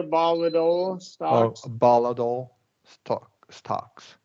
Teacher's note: we're going to do a flap T there, volatile stocks